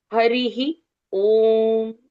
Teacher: तो विसर्ग के पहले जो अक्षर आते हैं उन अक्षरों के अनुसार वो विसर्ग का उच्चारण बदलते रहता है। यहां पर र के साथ पहले इ की मात्रा है तो विसर्ग का उच्चारण ह के साथ पहली इ की मात्रा ऐसे उच्चारण आएगा।